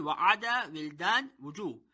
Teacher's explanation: Waw pronounced by the rounding of 2 lips without meeting with each other.